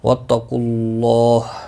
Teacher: واتقوا اللہ، قاف مستعلیہ ہے، پر پڑھا جائے گا. اللہ کا لام پیش کی وجہ سے پر پڑھا جائے گا